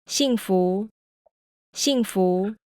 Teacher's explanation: the fourth tone doesn't go all the way down notice also that the second tone starts a little lower than where the fourth tone ends